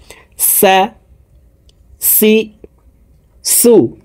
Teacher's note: সিন হরফকে বাহিরে বাতাস বের করে পাতলা ভাবে উচ্চারণ করতে হবে